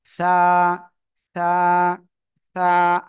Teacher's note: জিহ্বার আগা সামনের উপরের দুই দাঁতের আগার সঙ্গে লাগিয়ে আমরা উচ্চারণ করব